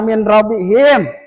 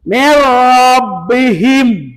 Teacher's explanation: Lam termasuk huruf idgam. Dimasukkan n-nya seolah-olah dari segi pembacaan tidak ada huruf n.